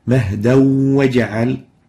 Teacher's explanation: And the waw, which is the letter following the tanween, is in green, indicating that it is an idgham of the tanween into the waw with ghunna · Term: idgham with ghunna